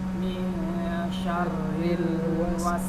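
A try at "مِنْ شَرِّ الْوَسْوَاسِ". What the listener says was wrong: Ini dia juga ril ini jangan dilamakan. Syarril wa.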